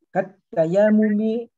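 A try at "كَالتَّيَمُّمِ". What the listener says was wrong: Ya-nya nggak panjang-panjang, Bu, Pak. Jadi supaya tidak kepentok gara-gara nafas, berhentinya di yang bunyi sukunnya. Kat. Kat. Tarik napasnya di situ. Kat tayammu begitu.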